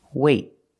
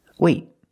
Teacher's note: It's a stop T. I stop the air. I stop the air with my tongue in the T position.